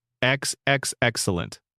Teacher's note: The steepled fingers, the drawn-out enunciation, the specific tone that manages to convey both approval and threat simultaneously. Most people remember this as excellent with a particular quality of elongation on the first syllable. Excellent. a slow, deliberate extension that gives the word a quality of relish.